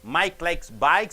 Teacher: Mike and bikes should be stressed